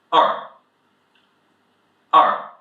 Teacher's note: This is the fourth tone, it's sharp falling from up to down. the "e" sound is a bit different from the way pronounced in English it's a bit about this er sound so èr, èr.